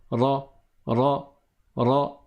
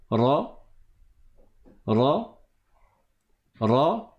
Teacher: bout de sa langue sur le palais mais le le milieu le centre du bout de la langue ne touche pas le palais sinon ça fait un L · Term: la lettre RA